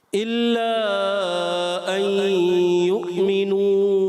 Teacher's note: آپ نے اگر کا پڑھا ان یؤمنو تو حمزہ نرم ہو جائے گا. آپ نے حمزہ تحقیق سے پڑھنا ہے خوب ظاہر کر